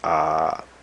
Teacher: the sound of the ah is just extended, so it takes two beats. Ah. So this is called a long vowel, but it's long only in the sense that it literally takes longer to say.